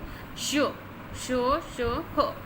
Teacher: मतलब जब हम बोलते हैं तो देखिए आप बोल कर देखिए शो ह, तो जो हमारा मुख है उसमें घर्षण आता है हमारे तालु के ऊपर, इसलिए सघर्षी यानी एक ऊष्मा प्रकट करते हैं, इस वजह से ये सघर्षी या ऊष्मघर्षी भी होते हैं।